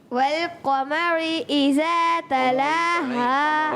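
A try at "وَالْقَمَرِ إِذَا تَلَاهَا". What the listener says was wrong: را کو پر نہیں کریں گے, باریک, اور ذال کی ادائیگی پھر قاف کو بھی تو موٹا رکھنا ہے. والقمری.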